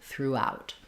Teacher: Throughout is just like the word through, but we add the out at the end, which has the ow diphthong. And we also stress on out in throughout.